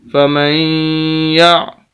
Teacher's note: میم زبر یا مین، یا زبر عین یا، فمن یا، غنہ ہوگا، یا ہے سخت کر کے پڑھنا اس کو، یا کو پھر آگے عین کے ساتھ ملائیں گے کیونکہ عین ساکن ہے۔